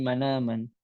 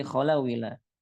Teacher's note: Jadi kita memindahkan harakat hamzah kepada sukun sebelumnya. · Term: naql